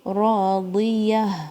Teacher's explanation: را 2 کاؤنٹ، را کو بھاری پڑھنا ہے. راضیہ، ضاد کے نیچے کسرہ، یا کے اوپر فتحہ اور ہا کے ساؤنڈ پہ اینڈ ہوگی.